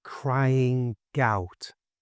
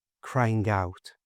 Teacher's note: Now, to sound natural when you say this, you should move the G from crying over to the front of out. So slowly it sounds like crying out and at normal speed crying out.